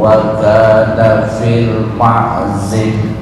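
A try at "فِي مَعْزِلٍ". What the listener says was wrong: bukan fil ya, tapi fi. Fi bukan fil tapi fi.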